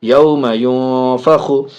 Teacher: نون ساکن کے بعد فا حرف اخفا میں سے، ناک میں آواز جائے گی